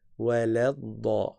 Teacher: Et c'est pas wala. La, le lam, il n'est pas emphatique.